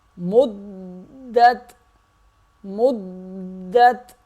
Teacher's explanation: میم دال پیش مد، دال تا زبر دت، میم دال سے مل جائے گا، اور یہ دال اگلے حرف یعنی کہ تا سے مل جائے گا، اور دال سختی سے ادا ہوگا، ذرا رک کر ادا ہوگا، اور تا پہ قلقلہ نہیں کریں گے، آواز کو ہلائیں گے نہیں